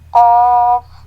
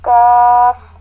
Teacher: قاف کو موٹا پڑھتے ہیں اور کاف جی کو باریک پڑھتے ہیں